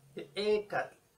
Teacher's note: Y de hecho la segunda vocal es una E larga.